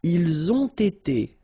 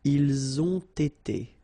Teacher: So same thing here, you get first the liaison z, and then you get the t